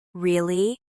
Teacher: if you say, really, with a flat tone, it sounds uninterested.